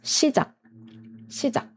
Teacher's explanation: we don't make the K sound at the end, but we make a stopping sound. So you should stop the ending sound like this.